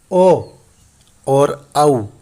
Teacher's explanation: ओ और औ, ये जो दो संयुक्त स्वर हैं, इनका उच्चारण कंठोष्ठ से होगा। फिर यहाँ देखिए, कंठ और औष्ठ दो अलग अलग स्थान एक हो गए हैं।